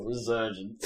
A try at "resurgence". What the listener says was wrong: It's not Z, we're not Americans. No, they don't spell it with a Z either.